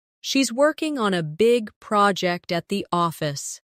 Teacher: Stress, working, big, project, and office.